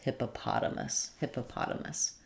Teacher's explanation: You can start on the stressed syllable, hippotamus, and then go back to adding your first two unstressed syllables.